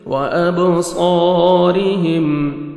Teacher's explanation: بسمعہم وابصارہم، با حروف قلقلہ میں سے ڈبل ساؤنڈ آئے گا، صاد کو موٹا کر کے پڑھنا ہے، 1 سیکنڈ کھینچنا ہے، الف مد ہے، را کے نیچے زیر ہے، را کو ہم باریک کر کے پڑھیں گے.